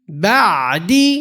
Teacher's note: The ayn, you should feel it in the middle of the throat.